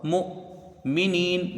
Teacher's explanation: میم کو حمزہ سے ملا کے پڑھا جائے گا، حمزہ ساکن ہے، تھوڑا سا اس میں جھٹکا ہوگا۔ مؤمنین، میم کو جلدی پڑھا جائے گا، نون یا زنی کھینچ کے پڑھیں گے، یا مدہ ہے، نون کے اوپر زبر ہے۔